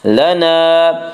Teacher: وَإِنَّ لَنَا، الف مدہ، الف ہمیشہ مدہ ہوتا ہے، الف سے پہلے ہمیشہ زبر ہوتا ہے، الف مدہ کو 1 الف کے برابر کھینچ کر پڑھیں گے